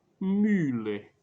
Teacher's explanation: O U do francês. O U, você pronuncia um I com biquinho.